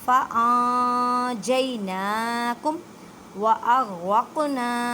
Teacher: نون ساکن کے بعد جیم ہے تو اخفا کریں، مینس کہ ان نہیں کہنا، نون ساکن کی آواز کو چھپانا ہے